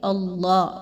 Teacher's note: اللہ کو بھی پر پڑھا جا رہا ہے، باریک نہیں پڑھنا